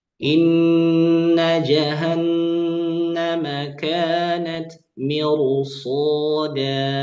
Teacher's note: sad di situ mempengaruhi tebalnya ra